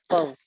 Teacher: زبان کی جو سائڈز ہیں وہ اوپر والی داڑوں کے ساتھ رائٹ اینڈ لیفٹ پہ لگتی ہیں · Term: واد